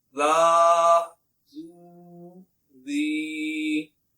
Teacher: ذال بغیر سیٹی کے پڑھنا ہے